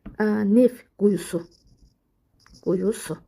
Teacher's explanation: Görürsünüz, özündən sonra samit gəlir. Deməli, t tələffüzdə düşəcək. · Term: t düşür